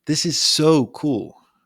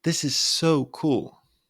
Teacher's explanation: your pitch goes up on so cool